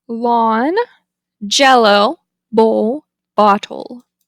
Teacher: the L is a lateral consonant the Airstream flows over the sides of the tongue